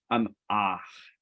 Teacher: So you get that little bit of friction in the back of the throat.